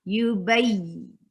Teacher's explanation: Nabar is the quality which pushes ya a little up from the letters beside it.